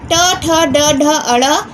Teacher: इनका उच्चारण मूर्धा से होता है। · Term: ट वर्ग